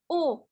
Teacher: harokat dhomah yang bunyinya u nah cara membacanya yaitu dengan cara pengucapannya yaitu dengan memonyongkan kedua bibir ke depan tapi suaranya dikeluarkan